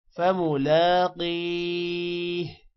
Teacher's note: لام پر کھڑی زبر ہے، تھوڑا سا لمبا کریں گے، قاف کو موٹا کریں گے اور قاف کے بعد یا ہے، قی تھوڑا سا لمبا ہوگا اور آخر میں ہا کی آواز نکالنی ہے